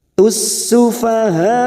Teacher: Tussu fokus pada huruf sin yang bertasdid. Tussufaha ada mat di sini yang bertemu dengan hamzah dalam satu kalimat, namanya mat wajib mutasil